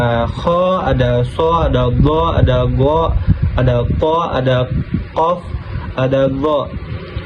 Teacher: Istilah yaitu mengangkat bagian belakang lidah ke langit-langit dan suara huruf menjadi tebal. Huruf istilah ada kho, ada so, ada go, ada go, ada ko, ada kof, ada go.